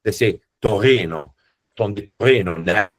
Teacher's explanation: most people in Torino are not able to roll an R like most other Italians.